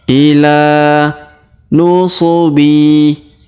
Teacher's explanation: Huruf la kita panjangkan 2 harokat karena terdapat alif kecil di atasnya dan alif bengkok atau alif maksurah di depannya.